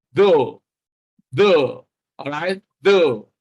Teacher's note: If you pronounce though correctly, there will be a vibration in your voice box. That's where you have the external protrusion in your neck, on your neck, which is called the Adam's apple. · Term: voiced